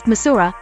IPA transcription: Mi.'Zuɹ.ə